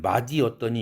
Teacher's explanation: 맛이 조사 이가 붙었을 때에는 이 시옷이 링크돼서 넘어갑니다. 뒤에 이가 모음으로 시작했으니까 자음이 없으니까.